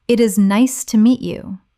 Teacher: The voice goes up slightly at nice and falls gently at you. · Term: rise and fall